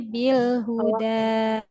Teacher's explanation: jangan sampai ada hamzahnya di situ